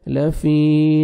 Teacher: یا مد ہے، یا ساکن سے پہلے زیر ہے، 1 سیکنڈ فا کو کھینچنا ہے